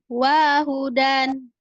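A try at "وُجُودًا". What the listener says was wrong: Bukan wahudannya. Wahudan. Bukan. Wahudan. Pendek. Wahudan.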